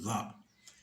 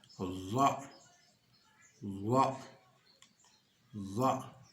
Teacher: vous sortez légèrement la langue que vous appuyez, n'est-ce pas, que vous mettez sur l'extrémité des dents supérieures. Donc, za.